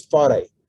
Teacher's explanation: In Tahitian, the R is a hard R, okay, like a Spanish R. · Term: rolled R